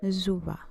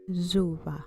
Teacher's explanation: pronounced with a z sound instead of an s